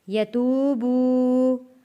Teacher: واو ساکن سے پہلے پیش ہے، حروف مدہ ہے، کھینچ کر پڑھیں گے۔